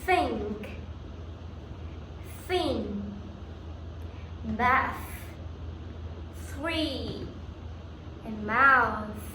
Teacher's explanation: This sound is made when you put the tongue between your teeth and blow air out. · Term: voiceless sound